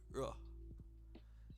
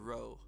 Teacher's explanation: It's definitely like an R sound, but it's like a little bit mixed with an L, if that makes sense.